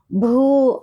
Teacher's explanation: భూ అనేది మహాప్రాణ అక్షరం కాబట్టి పొట్టలోంచి గాలి తీస్తూ గట్టిగా భూ అనేసిని పలకాలి